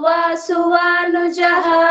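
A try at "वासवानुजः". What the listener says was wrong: ವಾಸು ಅಲ್ಲ, ವಾಸ.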